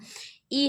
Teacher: जीहवा का हिस्सा विशेष कुछ ऊपर उठता है। इ ह्रस्व संवृत अवृत्ताकार तथा अग्र स्वर है।